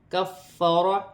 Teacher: کفر، فا مشدد ہے، را پر زبر کی حرکت ہے اور را موٹی پڑھی جائے گی